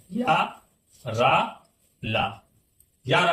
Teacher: या रा ला, यानी तालु से या बोला जाएगा, मूर्धा रा से, और दंत से ला